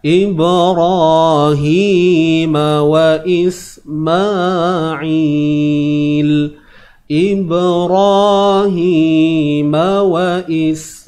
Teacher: huruf ba ni kita lantunkan Qalqalah Sugra ro ni kita tebalkan ibrahi Hi ini dua harakat ibrahima wa Ismail ibrahima wa Ismail